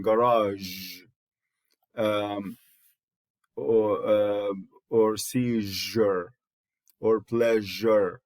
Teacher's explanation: That sound is a post alveolar, or you can call it palatal fricative, and it is voiced.